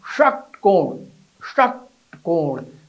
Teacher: षटकोण वाला स और ज्यादा मेहनत से बोला जाएगा। जीभ को मोड़कर तालु के लास्ट छोर मूर्धा को छूना है। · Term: मूर्धन्य स